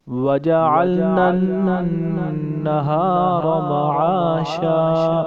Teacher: آگے نون کے اوپر تشدید ہے، ادھر ہم نون کے اوپر گنہ بھی کریں گے اور نون کو 2 بار پڑھیں گے۔